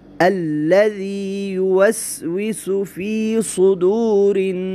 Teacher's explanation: را کو باریک پڑھیں اس لیے کہ را کے نیچے زیر ہے